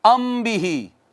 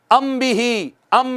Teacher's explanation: ایک الف کے برابر ناک میں آواز کو چھپانا، اخفا ہے